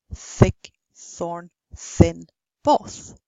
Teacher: you should use a fricative and not a stop